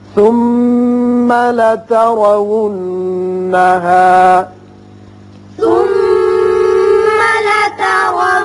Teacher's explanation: ثم میم مشدد ہے، غنہ ہوگا.